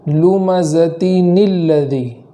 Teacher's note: ہے، تو جزم آیا اور اس سے پہلے تشدید ہے، تو لمزتن کے جو دو زیر ہے اس دو زیر کے اندر جو نون ہے اس نون کو زیر دے کر پڑھیں گے ، تو اس طریقے سے پڑھیں گے لمزتن الذی۔ اگر ہم